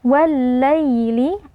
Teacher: alif lam pertama ditasdidkan atau dileburkan ke dalam lam yang kedua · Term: alif lam syamsiyah